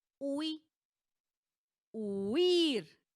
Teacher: La sílaba tónica recae en la i. Pero, ¿qué sucede? Están formando una sola sílaba. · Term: diptongo